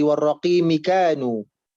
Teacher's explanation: warraqimi, mi-nya dibaca pendek ya, tadi dibacanya panjang.